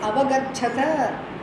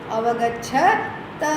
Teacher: Not Mahaprana, Alpa Prana for the last one.